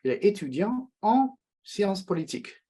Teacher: It's a nasal sound. Mouth is open, but some of the sound is escaping through the nose. Il est étudiant en maths.